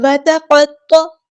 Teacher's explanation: تا باریک light letter ہے، باریک پڑھنا ہے اسے۔ قاف ہمارا ہیوی لیٹر ہے، موٹا پڑھنا ہے۔ طا بھی ہمارا ہیوی لیٹر ہے، موٹا پڑھنا ہے، اور عین کو وسطی حلق میں تھوڑا سا ادا کرنا ہے، تا ساکن ہے تو اس میں ہمز کی صفت ہوگی۔